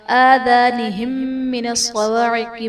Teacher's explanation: آذانہم من الصواعق میں میم ساکن کے بعد دوسری میم ہے تو یہاں پر ادغام شفوی کا قاعدہ ہوگا، یعنی میم ساکن میں ہم غنہ کر کے پڑھیں گے